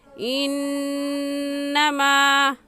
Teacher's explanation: इस आयत में इन्ना नून मुशद्दद है और नून मुशद्दद पर हमेशा गुन्ना करके पढ़ते हैं। तो हम पढ़ेंगे इन्नमा, मीम अलिफ माँ को एक अलिफ के बराबर खींचेंगे क्योंकि अलिफ से पहले ज़बर आ गया है। · तो अगर अलिफ से पहले ज़बर आ जाए तो अलिफ मद्दा कहलाता है और अलिफ मद्दा को एक अलिफ के बराबर खींच कर पढ़ते हैं